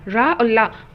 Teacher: अब ये कौन से वर्ण होते हैं? तो ये वो वर्ण जो दंत प्लस मसूड़ा को टच करते हुए निकलते हैं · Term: वर्तस्य